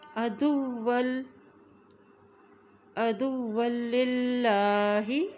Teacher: دال کی پیش کو واو کے ساتھ ملائیں گے کیونکہ واو کے پر شد ہے